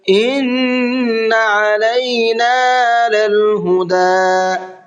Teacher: نون میں غنہ کریں گے، علینا کے عین کو صاف صاف نکال کر کے پڑھنا ہے